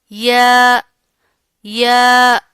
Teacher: जुबान का दरमियानी हिस्सा ऊपर के तालु को लगेगा तो या अदा होगा। या या इसको आपने छोटी या बड़ी या इस तरह करके नहीं पढ़ना।